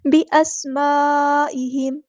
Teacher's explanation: یہاں پر ہمارے پاس کنیکٹڈ مد ہے، مد متصل ہے، 4 یا 5 کاؤنٹ میں اس کو لمبا کرنا ہے، حمزہ کی آواز کو واضح ادا کرنا ہے۔